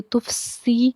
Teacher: पढ़ना है, ठीक है, ता फ़ा पेश तुफ़, सीन ज़ेर सी, सीन हरूफ़ सफ़ीरिया का हर्फ है, सीटी की आवाज़ आनी चाहिए